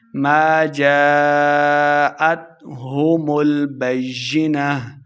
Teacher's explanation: جیم کے آگے الف ہے، اس کے اوپر مد ہے، اس لیے ہم نے اس کو خوب لمبا کر کے پڑھنا ہے